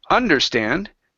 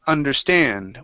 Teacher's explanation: the stress is on the end of the word instead of understand it's understand which I myself did not understand